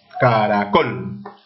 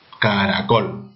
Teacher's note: ¿Dónde está la mayor fuerza de voz cuando yo pronuncio? En la sílaba col. Caracol. Última sílaba, sí. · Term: palabra aguda